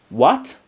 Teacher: rise from low pitch to a high pitch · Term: second tone